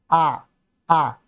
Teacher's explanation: নেমে যায়নি তাই এটা হচ্ছে নিম্ন মধ্য নিম্ন মধ্যস্ তারপরে দেখো আ উচ্চারণ করার সময় আমাদের মুখটা বেশি ফাঁক হচ্ছে এবং জিহ্বাটা একেবারে নিচে থেকে যাচ্ছে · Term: নিম্নস্বরধ্বনি